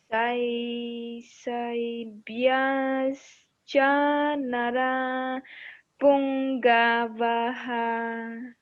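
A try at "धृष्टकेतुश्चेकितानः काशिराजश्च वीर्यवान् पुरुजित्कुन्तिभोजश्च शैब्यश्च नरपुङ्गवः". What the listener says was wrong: That's good. Very good. Yes, that's very good. Still beginning, but this is very good.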